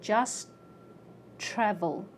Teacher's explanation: So I say just travel. My tongue goes up for a T and it stays there.